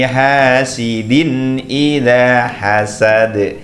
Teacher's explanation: ditutup juga bacaan Qalqalah Qalqalah artinya memang memantul